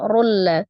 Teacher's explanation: Khairul, tanwin bertemu dengan huruf lam, idgham bila gunnah. Diidghamkan ke huruf lam disertai dengan dengung ya